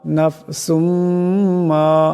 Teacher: ইদগাম হয়ে যাবে ইদগামের এক আলিফ পরিমাণ গুণ্য হবে